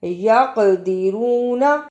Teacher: یقدرون، قاف جزم کی صورت میں حرف قلقلہ ہے. یق، را پہ پیش ہے، اس کو بھی پر پڑھنا ہے